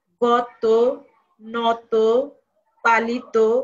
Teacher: এখানে অ এর উচ্চারণটা ও হয়ে যাবে